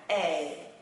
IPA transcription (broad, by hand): ei